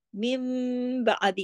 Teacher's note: मिन नहीं हो रहा, यहाँ पर मिम हो रहा है, क्यों, नून साकिन के फौरन बाद जब बा आ जाए तो नून की आवाज मीम में बदल जाती है , इकलाब का कायदा लग जाता है, यहाँ मीम नून मिन